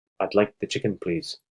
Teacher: they're focusing on I'd like chicken being the content words and the being reduced as the functional words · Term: sentence stress